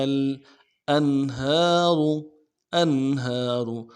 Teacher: ہا کو آگے لام کے ساتھ ملانا ہے، تحتها الانہار، انہار، ان میں نون ساکن ہے، اظہار کے ساتھ پڑھیں گے، ہا کے اوپر کھڑا زبر ہے، کھینچیں گے، اور را کو موٹا کریں گے،